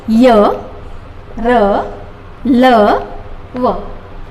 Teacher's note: अंतस्थ व्यंजन जब हम इनका उच्चारण करते हैं तब हमारे श्वास का गतिरोध जो है वो धीमा हो जाता है, वे अंतस्थ व्यंजन कहलाते हैं।